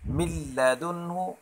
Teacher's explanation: لام اور را کے وقت غنہ نہیں ہوگا، جیسے مر ربی یا من لدنہ، نون ساکن کے بعد لام آ رہا ہے لیکن غنہ نہیں ہو رہا